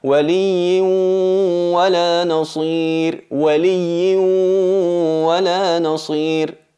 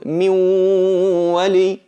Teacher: En el caso del nun, min wali. Notáis que el sonido de la nun, el cuerpo de la nun, no está presente, pero sí la nasalización, sí la característica que la acompaña siempre, y es ese sonido que sale de la cavidad nasal.